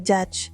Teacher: affricate, yaitu bunyi yang dimulai seperti hentakan kecil lalu berlanjut seperti gesekan